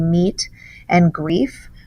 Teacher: The T sound and the F sound are clearly different, but that E sound is the same. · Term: slant rhyme